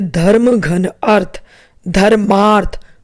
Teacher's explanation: सबसे पहले देखें अ यानी कि ह्रस्व अ के बाद जो उनका मेल हुआ तो दीर्घ आ बन गया